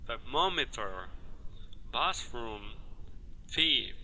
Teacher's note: ao pronunciar essas palavras com TH, não houve vibração das cordas vocais, e sim apenas soprando o ar entre os dentes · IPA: [θ]